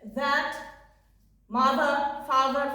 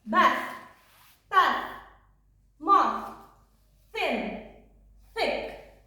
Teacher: our sound the can be voiced like this, that, mother, father, for example, and not voiced th, bath, bath, moth, thin, thick